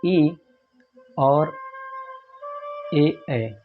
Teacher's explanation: जिन स्वरों का उच्चारण जीभ के अग्रभाग के सहयोग से होता है उन्हें अग्रस्वर कहते हैं